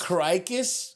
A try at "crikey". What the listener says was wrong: No, there's no S, dude.